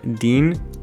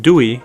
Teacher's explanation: this is pretty much the same sound as our letter D but it's not aspirated